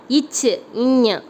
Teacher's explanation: நாவின் இடை மற்றும் நடு அன்னத்தின் இடை வருவது